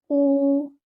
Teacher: O, not ho. Do not read it like the letter kha. It's like without air. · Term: qaf